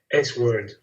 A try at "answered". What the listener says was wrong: Yeah. The W is silent. We don't pronounce the W. It's like sword. So we just say answer.